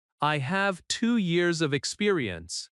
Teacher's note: Stress have years experience. Let small words be softer. When you finish a sentence, use a confident falling tone.